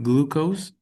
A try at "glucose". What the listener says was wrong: Glucose is the exact is a perfect pronunciation for that.